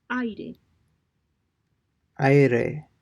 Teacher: So diphthongs occur when an unstressed I, U, or Y ending appear next to another vowel in the same syllable. Their vowel sounds do not change, but they blend together to form a single syllable.